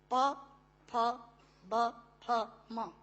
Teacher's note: दोनों होंठ मिलाकर बोले जा सकते हैं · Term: ओष्ठांग